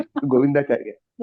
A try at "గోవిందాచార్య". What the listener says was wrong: చారి కాదండి, చార్య. గోవిందాచార్య. గోవిందాచార్య.